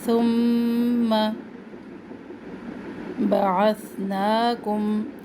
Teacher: یہاں پر بھی ثا کو سین سے نہیں چینج کرنا. بعثناکم نا کھڑا زبر ایک الف کے برابر. · میم مشدد غنہ ایک الف کے برابر